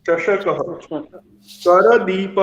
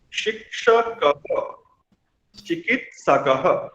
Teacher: करदीपः, अब यहाँ च भी नहीं है और क भी नहीं है, प। तो अंतिम अक्षर के अंत में अह सुनाई देता है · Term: विसर्ग